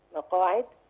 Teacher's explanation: القاف هنا حرف مفخم مرتبه اولى لانه مفتوح وبعده الف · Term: حرف مفخم مرتبة أولى